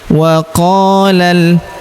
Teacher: huruf qa kita panjangkan 2 harokat karena terdapat alif di depannya